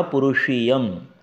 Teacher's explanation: पुरुषीय में जो श है ये मूर्धन्य है